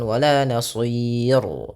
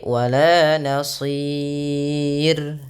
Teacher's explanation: Pada lafal sir rnya dibaca tipis jangan dibaca tebal